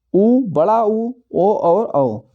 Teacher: वे स्वर जिनका उच्चारण करते समय ओष्ठ गोल हो जाते हैं अर्थात वृत्त जैसी आकृति ग्रहण कर लेते हैं, उन्हें बोलते हैं व्रतमुखी। जिसमें ओंठ गोल हो जाते हैं या वृत्त जैसी आकृति हो जाती है ओंठों की, उसे बोलते हैं व्रतमुखी।